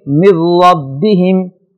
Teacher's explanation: را کے اوپر زبر ہے لہذا اس کو موٹا پڑھیں گے · نون کو اس انداز میں اگلے لفظ میں مکس کر کے پڑھیں گے کہ نون کی آواز ختم ہو جائے گی، تو اس کو ہم پڑھیں گے من ربہم۔